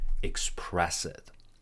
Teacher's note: Actually, we're linking to and with a little bit of a W, to express it. And we also link express and it